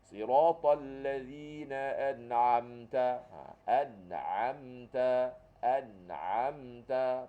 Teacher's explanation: Huruf ain ni keluar di tengah kerongkong.